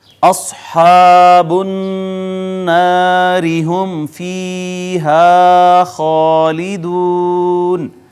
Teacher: اصحاب النار هم فیہا خالدون، تو یہاں دیکھیں صاد حروف مستعلیہ میں سے ہے، موٹی پڑی جائے گی، پھر الف مدہ ہے، پھر نون کے اوپر شد تھی، یہ یہاں پہ غنہ ہوگا، را کے نیچے زیر ہے، اس کو باریک کر کے پڑھیں گے۔ میم ساکن کے بعد با میم کے علاوہ کوئی حرف ہے اظہار شفوی ہوگا، یہ یا مدہ ہے، یہ الف مدہ ہے اور اس کو کہیں گے الف المدیہ صغیرہ، اور پھر یہ واو مدہ۔